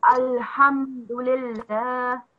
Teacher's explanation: you have to prolong the lam